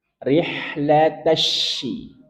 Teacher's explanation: Jangan sampai rih, lo, tapi la, tipiskan. Rihlata, masuk ke shin yang bertasydid. Maka berikan nabroh, penekanan.